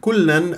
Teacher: لا تطل جريان الصوت في اللام المشدده لان ليست رخو بل بينيه